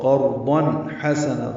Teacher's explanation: تنوین کے بعد ہا آنے کی وجہ سے اظہار ہوگا